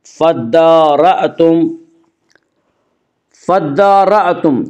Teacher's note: نفسا فدارأتم، نفسا فدارأتم، فدارأتم دال کے اوپر کھڑا زبر ہے، کھڑا زبر قائم مقام ہے الف کے، اس لیے کھڑا زبر کو ایک الف کے برابر کھینچ کر پڑھیں گے۔ فدارأتم، فدارأتم یہاں حمزے کو جھٹکے کے ساتھ پڑھیں گے۔